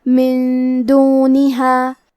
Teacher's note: پھر حرف الدال ہے کلمت دونہا. دال حروف الاخفاء میں سے ہے تو ہم یہ حکم کو غنہ کے ساتھ ادا کریں گے